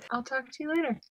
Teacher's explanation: you hear that the words talk and later receive the stress do you hear how the music or the intonation Falls after the final stress word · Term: falling intonation pattern